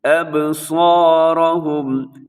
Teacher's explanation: یہاں با اپنے ہلانا ہے، با کی آواز قلقلہ کریں گے، اور اس کی وجہ یہ ہے کہ حروف قلقلہ جو ہیں وہ 5 ہیں، ان کے اندر با بھی شامل ہے، قاف طا با جیم دال۔